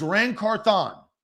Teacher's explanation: the emphasis is on Thon